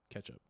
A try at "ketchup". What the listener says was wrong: Ketchup. It's an E, not an A.